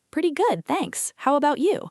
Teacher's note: Short, warm with rising intonation on you.